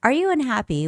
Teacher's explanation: The stress goes on you, so it's got to be current, current. And the question this time has a rising intonation in the end